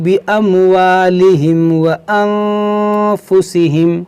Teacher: یہاں پر ناک میں آواز کیوں گئی؟ کیونکہ نون ساکن کے بعد فا حروف اخفا ہے تو یہاں پر غنہ ہوگا